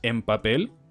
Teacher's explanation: se pronuncia con M porque la B obliga a los labios a juntarse y eso hace que la N se transforme en una M · la n se transforma en m porque luego le sigue una p · que juntan los labios que los aprietan entonces la regla es si a la derecha de una n hay una B p o m entonces esa n se transformará en una m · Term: coarticulación